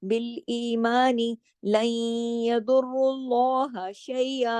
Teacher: नून साकिन के बाद या आया, यहाँ इदगाम हुआ। यदुर्रुल्लाह में द्वाद मोटा है, रा भी मोटा है, फिर अल्लाह के नाम में हम लाम को हैवी करेंगे, शैया के ऊपर हम मद इवत करेंगे।